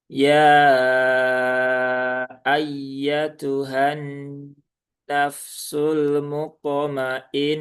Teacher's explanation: Kemudian nunnya bertasdid lagi maka mainah ya. Dan h-nya ta marbutahnya satu harakat. Jadi tidak dipanjangkan.